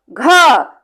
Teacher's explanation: घ जैसे ही उच्चारित करते हैं ढेर सारी वायु हमारी बाहर आके हाथ से टकराती है। तो ये क्या है, ख और घ जो है ये महाप्राण है।